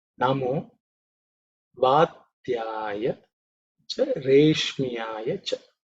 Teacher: This ush is the tongue raised sha, cerebral sha.